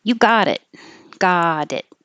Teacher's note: The T changes to a D.